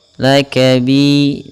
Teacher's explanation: bi tipis, yaitu mad tabi'i 2 harakat ditandai dengan kasrah bertemu ya.